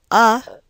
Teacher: the vowel uh would be classified as a mid back unrounded LAX vowel